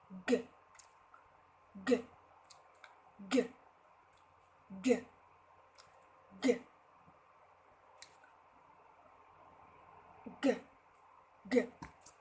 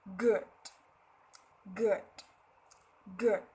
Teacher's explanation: Mình sẽ hạ lưỡi xuống ngay lập tức, và mình sẽ không ấy, kiểu như mình sẽ không bật khí giống như âm k kia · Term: âm g